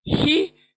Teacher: ही गले के बीच से आवाज आएगी